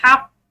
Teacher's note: قاف موٹی اور یہ مشدد بھی ہے تو اس کو دباؤ کے ساتھ پڑھیں گے